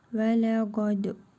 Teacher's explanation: Qa və dəl hərfinin üzərində cəzm var. Qalqala edərək vurğulu tələffüz edirik.